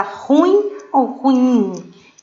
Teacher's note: a sílaba tônica onde ela foi mais forte lá na última sílaba